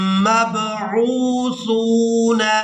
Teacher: عین واو پیش کھینچ کر ادا کریں گے کیونکہ یہ واو مدہ ہے